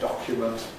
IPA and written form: ˈdɒkjumənt (document)